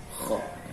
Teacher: Huruf kha itu harus ada kayak semacam getaran-getaran ringan yang ada di sini ya.